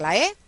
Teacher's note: cuando la lengua no está tan alta está en una posición media y está hacia delante vamos a pronunciar la e